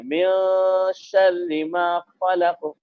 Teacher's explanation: صورت میں ویسا ہاں پڑھ سکتے ہیں، لیکن اگر حروف ہلکی ہوتا تب اس ہاں نون جی کے بعد اگر حروف ہلکی میں سے کوئی ایک حرف ہوتا تو پھر ہاں نون کی آواز کو ظاہر کر کے پڑھتے، لیکن چونکہ یہاں پر اخفا میں سے شین آئی ہے تو لہذا نون کی آواز کو ناک میں چھپا کے پڑھنا ہے